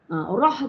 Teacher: Rah tu ro mesti tafkhim tebal Sebab Dia ro ro dengan ru ya tafkhim tebal ro roh